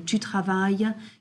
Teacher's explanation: As you know, in French, we have a lot of silent letters. So, please do not pronounce those S's and T's at the end